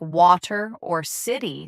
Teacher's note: t- flapping is common in American English where the t sound in the middle of words like water or city sounds softer, almost like a d.